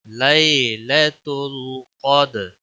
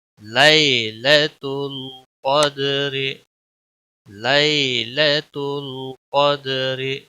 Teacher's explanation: قاف موٹا پڑا جائے گا، یا لین ہے یہاں پر اور دال پر قلقلہ ہوگا